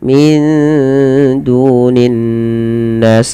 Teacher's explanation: Kemudian min dunin nas, sama di sini ada ikhfa, ada nun sukun bertemu dal, samarkan nunnya kepada huruf dal sebagaimana inda dan ditahan.